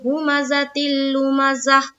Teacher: گا، تو جب رکیں گے تو کیا پڑھیں گے، ہومزتی لومزہ، اس تا کو ہا ساکینہ بنا دیں گے